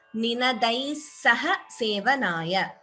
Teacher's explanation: if you choose to chant together, then we have to combine the Sandhi and chant it as Ninadai Saha Sevanaya